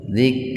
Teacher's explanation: Nah, jangan dibaca qalqalah itu, huruf kafnya itu. Karena kaf itu bukan qaf. Kalau qaf qalqalah.